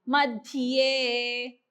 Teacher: ध साठी जीभ वरती दाताला लागते आणि लगेच ये कडे जायचं